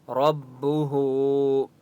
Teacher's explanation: را کو پر پڑھیں گے اور ہا کو 1 الف کی مقدار کھینچ کر پڑھیں گے